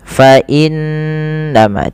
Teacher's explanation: wajib ditahan dengan gunnah, dengan sembari memasukkannya ke rongga hidung kita.